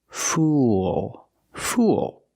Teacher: Use the dark L at the end. Link the sounds oo with the dark L. It makes an extra sound.